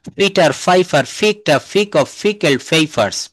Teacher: পিটে পিক অফ পিকেল পেপারস। তো এটা আমরা কিন্তু পি বলবো না। আমরা সব জায়গায় ফ উচ্চারণ করব।